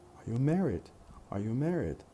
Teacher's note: this stress pattern for this question would be something like weak weak strong weak